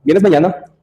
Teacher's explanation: entonación ascendente para preguntas